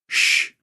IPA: ʃ